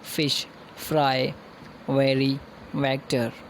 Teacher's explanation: Then we have labiodental sounds. These are the sounds produced with bottom lip and upper teeth. Labio means bottom lip.